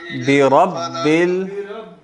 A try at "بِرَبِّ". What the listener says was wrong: را موٹی ہے نا. برب